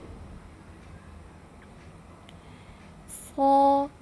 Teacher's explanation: tebalkan, jangan dimonyongkan pada saat diharokat fathah.